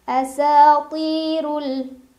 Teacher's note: dibaca secara tafkhim karena ra barisnya dhammah, jadi bacanya tebal. Tebal itu pangkal lidah kita naik. Asatirul ada alif lam qomariyah karena ada alif lam yang bertemu dengan huruf qomariyah yaitu hamzah.